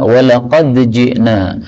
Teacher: ini dal ketemu jim boleh idgham karena makhrajnya berdekatan